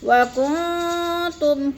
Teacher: وَكُنْتُمْ کن میں اخفا ہے، تم میں اظہار شفوی ہے، غنہ نہیں کریں گے